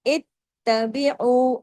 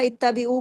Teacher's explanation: ات، الف تا، الف یہ جو نا الف تا زیر ات، اور پھر تا زبر تا، ات. دو دفعہ تا کا پڑھنا ضروری ہے، اس لیے کہ تشدید بتا رہی ہے کہ یہاں پہ دو تا ہیں